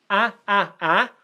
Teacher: in court and this is R as in cut okay so both these vowel sounds come from the back of our mouth our tongue pulls back in the mouth